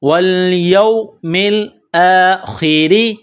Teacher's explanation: خا، خا زیر خی، را زیر ری، را کے نیچے زیر ہے تو را کو باریک کرنا ہے